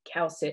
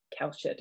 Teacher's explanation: he also was using an s here instead of an sh sound finnish doesn't have the sh sound like we have